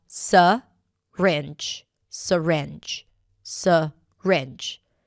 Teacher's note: the first syllable can be reduced and pronounced as 'suh-ringe'.